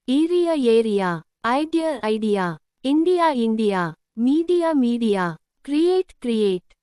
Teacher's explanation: Notice the A joins with another vowel and makes a sliding sound. This is called a gliding vowel because the sound slides from A to the next vowel.